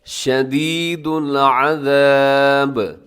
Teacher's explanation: आखिर में बा पे वक़फ़ करेंगे तो बा साकिन होगी, जब बा साकिन होगी तो बा पे क़लक़ला कर देंगे आप